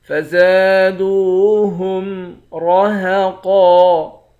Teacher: را اور قاف ان دونوں حرف کو موٹا پڑھیں گے، آخر میں دو زبر کی تنوین ہے، دو زبر کی تنوین میں جب وقف کرتے ہیں تو ایک زبر بن جاتا ہے۔